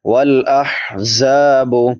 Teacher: والاحزاب، ہا چھوٹی ہا ہے، وسط حلق سے ادا ہوتی ہے. زا سختی سے ادا ہوگی، سیٹی والے حروف میں سے ہے. 3 حروف جو سیٹی کے ساتھ ادا ہوتے ہیں، زا سین صاد، تو اس کو سختی سے پڑھیں گے.